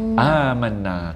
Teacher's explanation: amanna kena dengung juga kerana nun bertanda sabdu